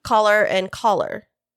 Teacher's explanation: it is primarily western speakers that have the low back vowel merger